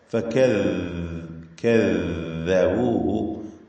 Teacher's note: ഫകദ്ദബൂഹു നാവിന്റെ അറ്റത്തിന്റെ മുകൾ ഭാഗം എന്നതാണ്. അറ്റത്തിന്റെ ഏശം മുകളിൽ മേലെ പല്ലുമായി ചേർത്തുകൊണ്ടാണ് ദാല് ഉച്ചരിക്കുക. ഈ ദാല് ലൂസാക്കി ഉച്ചരിക്കേണ്ട അക്ഷരമാണ്.